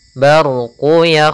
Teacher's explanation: ada huruf ro yang berharakat sukun sebelumnya fathah kita namakan dengan ro tafkim ro yang tebal